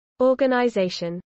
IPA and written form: ˌɔːɡənaɪˈzɛɪʃən (organization)